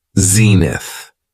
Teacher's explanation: it has two syllables and the stress is on the first syllable